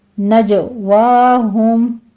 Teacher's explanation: جیم کے اوپر قلقلہ کرنا ہے، دھیان رکھنا ہے آپ نے، نج نہیں کہنا، آپ نے بیچ میں چھ کی آواز نہیں لانی ہے، ہمس نہیں ہونی چاہیے ، نجواہم، ہوم میں میم ساکن کا اظہار شفوی کریں گے،